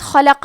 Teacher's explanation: کلمت خلق میں خا پہ، لام پہ اور قاف پہ تینوں پہ زبر ہے تو ہم یہ تینوں زبر کو برابر سے ادا کریں گے۔ حرف الخاء حروف التفخیم میں سے ہے تو ہم یہ حرف کو موٹی آواز میں پڑھیں گے۔